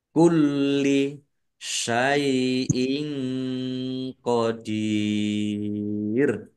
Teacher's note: Lam fathah berdiri juga mad thobi'i panjang dua harakat. Lamnya dibaca dobel ada tasdidnya kulli ya ditekan biar tampak dobelnya. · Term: dibaca double